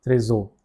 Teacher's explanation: H is silent over here. So the pronunciation will be with this A.